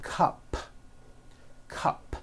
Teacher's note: take the word cup cup it ends with an unvoiced p cup well then if you add an S to the word